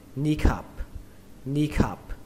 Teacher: Âm I này các bạn hơi kéo nó ra một tí nhé, hơi dài.